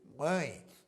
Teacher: quando você pronuncia a palavra mãe se você tapar o nariz parte do som fica preso porque o som sai parte pela boca e parte pelo nariz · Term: nasal